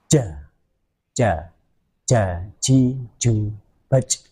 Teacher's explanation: Jim mempunyai sifat khas, yaitu syiddah. Syiddah itu tertahannya suara.